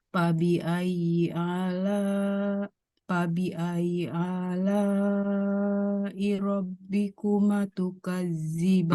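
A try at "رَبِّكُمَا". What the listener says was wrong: Ma-nya panjang. Rabbikuma 2 harokat.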